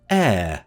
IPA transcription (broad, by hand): eə